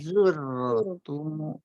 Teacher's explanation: ro sukun tebal karena diawali dhamma zur